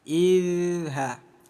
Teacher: ada zal sukun, sekedar mengingatkan, jangan sampai dibaca pantul menjadi id, bukan qalqalah ya.